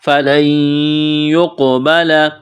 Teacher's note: یہاں نون ساکن کے بعد یا ہے تو یہاں نون کا یا میں ادغام کریں گے، غنہ کریں گے